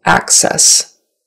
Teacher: the syllable stress is on the first syllable